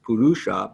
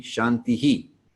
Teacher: the dot indicates that you echo the vowel that precedes the H back. So it's not just purusha, but purushaha, as in shanti, shanti, shantihi.